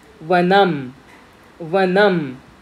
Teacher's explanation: तो थोडा दाताला पण टच करतो आणि आपले थोडे लिप्स सुद्धा त्यामध्ये इन्वॉल्व्ड आहेत. सो व इट इज दंतोष्ठ्यः, दंत अधिक ओष्ठः, दंतोष्ठ्यः.